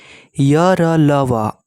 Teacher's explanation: है यह स्वर और व्यंजन के बीच स्थित अंतस्थ है य जीव तालू दांत और होठों के परस्पर सटने से उच्चरित होते हैं लेकिन कहीं भी पूर्ण रूप से स्पर्श नहीं करता है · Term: अंतस्थ व्यंजन